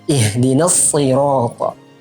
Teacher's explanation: Huruf shad di sini memiliki makhraj yang sama dengan huruf sin. Namun huruf shad memiliki sifat tebal, isti'la dan itbaq. Berbeda dengan huruf sin yang mustafil.